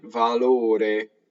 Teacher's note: There's a closed O before the R.